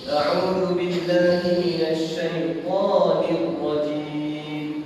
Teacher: huruf shin ni disebut dia ada bunyi dia seperti hamas, iaitu angin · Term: tafasyi